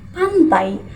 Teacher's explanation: bunyi AI itu bukan dua buah vokal terpisah, tapi menyatu menjadi satu bunyi yang khas. Lidah kita bergerak dari posisi vokal pertama ke vokal kedua dengan lancar seperti seluncuran. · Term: diftong